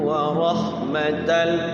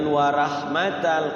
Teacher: ada hukum ro dibaca tafkhim jangan warah matal kalau warah matal tipis